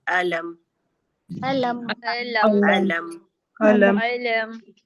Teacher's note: मुंह के खाली हिस्से से हमजा की अदायगी हुई। लाम में हमारी जबान ऊपर के तालू से लगी और मीम में हमारे दोनों होठों का खुश हिस्सा मिल गया।